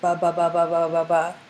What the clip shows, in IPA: bʌ, bʌ, bʌ, bʌ, bʌ, bʌ